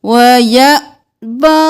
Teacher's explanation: حمزہ پر جزم ہے تو جھٹکا دیں گے